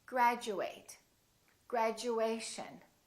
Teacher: Instead of saying chew, it sounds like we're saying Jew.